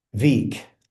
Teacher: my W sounded a little bit like a V